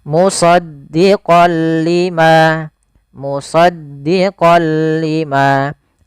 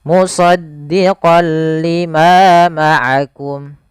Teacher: Awalnya kalau kita baca musaddiqan, karena bertemu dengan huruf lam, tanwinnya masuk ke huruf lam. Suara n-nya dihilangkan diganti menjadi huruf lam. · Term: idgham bila gunnah